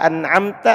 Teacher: Dibaca jelas mimnya tanpa gunnah, mim sukunnya. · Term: Idhar